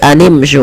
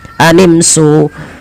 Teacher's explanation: Hati-hati dalam melafalkan syin jangan sampai dia terbaca dengan zin.